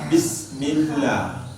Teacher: Tapi kalau bismil hanya seolah-olah ke bawah. Bismillah, la ada harakatnya, 2 harakat panjang tuh ya, sehingga mulut sedikit dibuka.